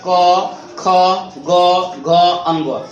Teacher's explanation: इन पांचों वर्णों के उच्चारण मुख के कंठ भाग से होता है, इसलिए इन्हें कंठ्य वर्ण कहते हैं